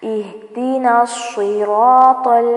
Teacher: اہدین، یہاں پر خیال رکھیں، اہدنا ایسے نہیں پڑھنا، ہا ساکن کو ہلانا نہیں ہے ورنہ ہا کے نیچے زیر محسوس ہوگی